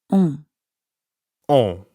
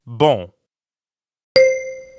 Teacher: In fact, the N isn't really pronounced at all. Instead, practice saying O like the letter O in English, but purse your lips. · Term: nasal sounds